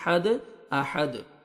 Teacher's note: ہے، سٹاپ کریں گے تو دال ساکن ہو جائے گا اور دال پہ قلقلہ کریں گے کیونکہ دال حروف قلقلہ میں سے ہے، ڈبل ساؤنڈ آئے گا